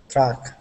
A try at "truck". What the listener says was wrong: So I heard a little bit of a d instead of r. Truck. Truck. Truck. So try to keep your tongue down. After you do the t, say t, and then keep your tongue down.